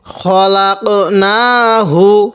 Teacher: এই নুনের মধ্যে এক আলিফ টান দিব কারণ খারা জবর খারাজের উল্টা পেশ